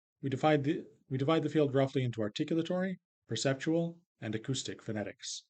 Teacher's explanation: and what you see here in this pitch track is that when we start the list the pitch goes High it still stays higher than it was for the middle element in the list and it's only when we get to the final element in · that final fall indicates the end of the list